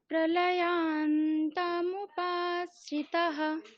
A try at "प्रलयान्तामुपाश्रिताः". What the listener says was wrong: শ্রিতাহ আকার তো দীর্ঘ, শ্রিতাহ।